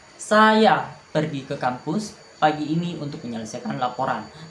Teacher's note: Tekanan pada kata saya menunjukkan bahwa yang pergi adalah saya bukan orang lain.